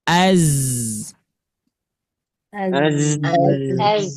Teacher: huruf shad sin zai yang yang menyamakannya semuanya memiliki sifat saofir. Sofir itu adalah desisan. Ada yang menyerupai desisan lebah, ada yang menyerupai desisan ular ataupun burung. · Ujung lidah bertemu dengan gigi seri bawah. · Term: huruf zai